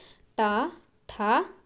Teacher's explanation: నాలుకతో వచ్చేసి మనకు అంగిలిని తాకుతూ పలికే అక్షరాలను మూర్ధన్యాలు అంటారు